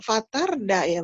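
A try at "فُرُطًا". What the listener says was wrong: Tarda, terangin A-nya, tarda.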